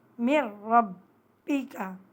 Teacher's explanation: نون ساکن کو حذف کر دیا، ختم کر دیا اور میم کو را کے ساتھ ملا کر پڑھ رہے ہیں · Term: ادغام را